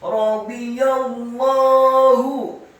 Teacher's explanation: Radhiyallah. Kemudian ya-nya dibaca tipis fathah satu harokat. Selanjutnya langsung disambung ke huruf lam yang tasydid pada kata Allah. · Lamnya setelah ditasydidkan fathah dua harokat karena harokatnya tegak. Kemudian ha-nya pada kata Allah dibaca tafkhim tebal dan dhammah satu harokat.